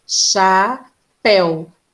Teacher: É um ditongo. Ela é um ditongo aberto.